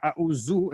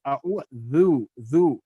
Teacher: So my tongue is coming out and touching the upper two teeth. So when the tongue comes out properly, then your dal will come properly.